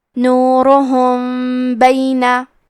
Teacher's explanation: ہم میم ساکن کو چھپاتے ہوئے اور غنہ کے ساتھ یہ حکم کو ادا کریں گے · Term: اخفاء شفوی